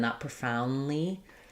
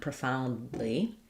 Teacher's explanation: It may almost be fully swallowed. You just don't want a really long N, not profoundly.